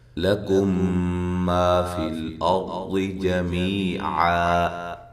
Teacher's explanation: کم پہ جو میم ساکن کا ادغام ہے مع الغنہ